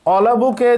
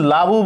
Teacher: অলাবুকে যদি লাবু বলি, অ নাই, লাউ বললেও অ নাই, তার মানে স্বরধ্বনির লোপ পেয়েছে। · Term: স্বরলোপ